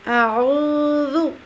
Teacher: ذو زے آ جاتا ہے، اعوذ نہیں ہوگا، اعوذ۔ ذو جو ہے زبان کی نوک کو سامنے والے اوپر والے دانتوں کے اندرونی کناروں کے ساتھ لگاتے ہوئے باریک آواز میں اور نرمی کے ساتھ ادا کریں گے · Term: زال کے تلفظ